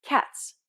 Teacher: It starts off as a t- sound but ends with a s sound.